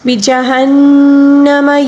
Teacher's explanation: یومئذ بجہنم، یہاں پر ہا کے بعد نون مشدد ہے، نون مشدد کو ہم غنّے کے ساتھ پڑھیں گے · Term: غنّہ